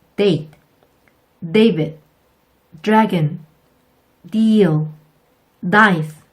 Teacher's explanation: 첫 음절의 D는 한국말의 디귿보다 약하게 발음된다는 거 꼭 기억해 주세요.